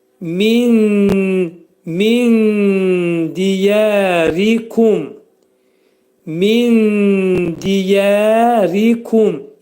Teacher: Min diyərikum kəlməsində nun dələ yetişir, ixva. Nunun 3/1 dəlin məxrəcində gizlədilir. Dəl hərfinin məxrəci dilimizdəki d hərfinin məxrəci kimidir.